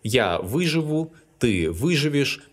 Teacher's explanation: As to the verb выжить, all its forms are stressed on the first syllable. Я выживу, ты выживешь, and so on.